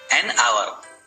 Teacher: As H is silent here, hour starts with a vowel sound. So, N is used before the word hour.